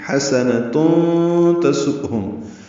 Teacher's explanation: یہ تنوین کے بعد تا آنے کی وجہ سے اخفا ہے